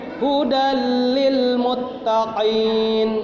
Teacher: Idgham bila gunna, jadi bacanya jangan terlalu didengungkan.